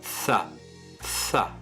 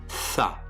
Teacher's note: On va positionner le bout de sa langue entre les dents du haut et les dents du bas et on va pousser un son T.